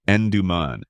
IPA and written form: ˈɛndəmən (Enderman)